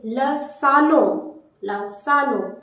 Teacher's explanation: Notice again N is taking the nasal sound. It is coming in the end.